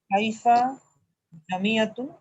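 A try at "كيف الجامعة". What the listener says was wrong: কাইফাল জামিয়াতু, একটা মিলে পড়তে হবে।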